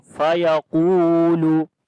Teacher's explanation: Qaf we read in heavy sound, and also we long due to waw madda is there. Waw is coming with sukun sign, and there is dhamma on the before letter we long.